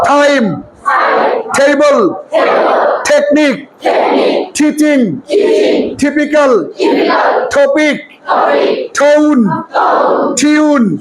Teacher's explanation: 7 number সূত্র দেখো, যদি কোনো শব্দের শুরুতে, শব্দের কোথায় টি থাকে, শুরুতে কিন্তু বলেছি, শুরুতে টি থাকলে আজকে থেকে বলবা ঠ, ট না, বলে ঠ। আরে বাবা, ঠ বলার সময় এই দেখো, ঠ বলার সময় হাত সামনে এনে দেখো তো প্রচুর বাতাস হাতে লাগে কিনা। · ঠ বলার সময় হাত সামনে এনে দেখো তো প্রচুর বাতাস হাতে লাগে কিনা। ঠ, ঠ, ঠ, ঠ, ঠ বলার সময়, ঠ বলার সময় হাতে প্রচুর বাতাস লাগলে মনে করবো উচ্চারণ হচ্ছে, না হলে হয় নাই।